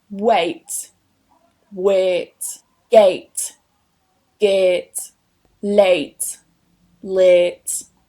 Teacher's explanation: the diphthong eɪ changes to the monophthong eː